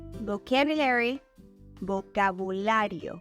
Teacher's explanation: we emphasize the second a in the Spanish word